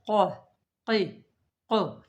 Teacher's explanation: When this hairs comes, projection in our throat, from this point, when the root of the tongue touch the soft palate, qaf is pronounced